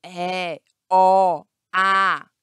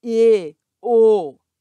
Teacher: Então, o acento agudo, ele é aberto. É, O, A. E o acento circunflexo, ele é fechado.